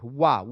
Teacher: वाह, दंतोष्ठ है वाह, ये बात आप ध्यान रखेंगे, क्लियर। दंतोष्ठ यानी दांत और ओठ